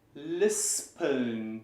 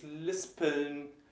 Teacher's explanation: it's pronounced separately because the syllable ends at the S and the P's in the next one